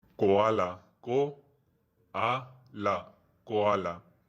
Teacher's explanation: Ka, it is simple, but it is not plosive like ka in English.